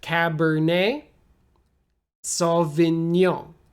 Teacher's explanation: the g n o n sounds like n y o kind of foreign and then with your nose a little bit